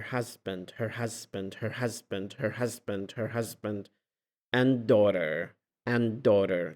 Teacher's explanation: لاحظ دي وحدة، صار deletion للدي مال and